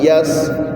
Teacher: اب دوسرا لفظ دیکھیں, یا کے بعد سین ہے, سین میں سیٹی کی آواز دینی ہے. یا سین زبر یس.